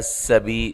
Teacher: سین کو باریک سیٹی سے، بی یا مدہ ہے